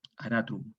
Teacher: En latín clásico, esta A breve corresponde a una A abierta, la A larga una A cerrada.